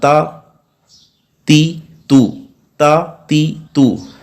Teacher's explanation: जुबान की नोक सनाया उलिया की जड़ों से जब लगेगी तो वहां से ता अदा होगा और यह हर्फ बारीक है